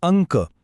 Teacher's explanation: क च्या आधी नाकातून आवाज येतोय म्हणून अ वर अनुस्वार तसच संकल्प इथे पण क च्या आधी